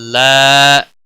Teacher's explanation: لا الف مدہ ہے، ایک الف کے برابر کھینچ کر پڑھیں گے